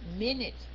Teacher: Cái âm N đứng chính giữa hai cái nguyên âm, mình sẽ share nó, mình sẽ đọc với cái âm trước và nghĩa là đọc cái âm N hai lần.